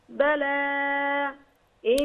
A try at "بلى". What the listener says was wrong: لا بلى، لما نقف بلى حركتين بس،